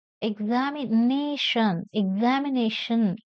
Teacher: examination has five syllables and the fourth one is stressed